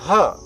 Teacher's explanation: ह जो है जब हम सांस को निकालते हैं तो ये प्राण वायु है, इसलिए ह को हम महाप्राण अक्षर या वर्ण भी कहते हैं